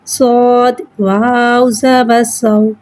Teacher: واو کو ایک الف یعنی 3 حرکات کے برابر کھینچ کے پڑھیں گے۔ واو کو ہونٹوں کی گلائی کے ساتھ ادا کر کے پڑھیں گے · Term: واولین